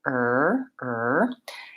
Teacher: make the American R sound with your tongue back and tight. It sounds like er.